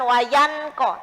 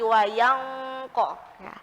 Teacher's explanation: karena bunyinya nun sukun nya sudah mulai jauh tidak terlihat jelas